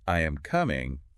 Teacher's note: with statements like I am coming, our pitch usually falls at the end. It's like we're indicating that we're giving information, making a declaration. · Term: falling pitch